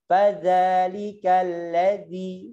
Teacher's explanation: Itu za, ujung lidahnya taruh di gigi.